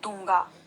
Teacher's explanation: दूंगा जो शब्द है उसमें भी द में जोर पड़ रहा है, द में जो है ज्यादा ऊर्जा खर्च हो रही है, और यहाँ पर अनुस्वार ना होकर अनुनासिक का प्रयोग होगा।